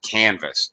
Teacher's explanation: this verb actually has first syllable stress